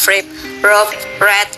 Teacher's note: It's an approximant. It is produced by bringing the blade of the tongue into a constriction of open approximation with the alveolar ridge. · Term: alveolar approximant